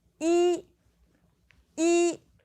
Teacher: But, if you have the word yī alone, it's first tone.